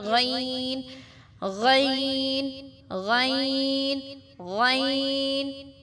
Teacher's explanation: اس کی ساؤنڈ جو ہے تھوڑی سی پیچھے کی طرف سے اور آتی ہے